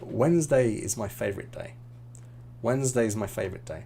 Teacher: the Wednesday and is becomes almost one word